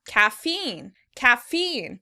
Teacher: In American English, the word is stressed on the second syllable, caffeine, caffeine.